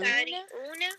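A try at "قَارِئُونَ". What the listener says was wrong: शायद आपने बीच में आइन पढ़ा है, तो इसमें क़ारिउन में आइन नहीं आना, ठीक है?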